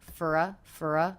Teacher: reduced the vowel in the word for to the schwa